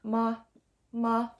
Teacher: the fifth tone which is a silent tone ma ma short and sweet and quiet